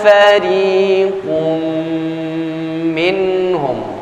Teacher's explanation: Qaf memiliki harakat hidup yakni tanwin, kemudian bertemu dengan huruf mim, idgham bi gunnah